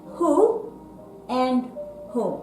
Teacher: when why what and white but we say who and who if WH + o we say the H sound instead of the W sound